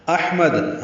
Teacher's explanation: حمزہ کو حا سے ملانا ہے، حمزہ اقصی حلق سے حا وسط حلق سے ادا کریں گے